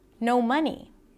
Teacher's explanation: The fact that I had, pause, no money, stress. She's emphasizing each word here because she is not trying to downplay it.